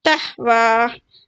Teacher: تحوی میں جو ہا ہے نا باٹم تھروٹ سے آئے تحوی، اگر اس میں مڈل والا آ جاتا تھا تحوی ہوتا تھا، تحوی، ٹھیک ہے، مڈل سے آتا تھا.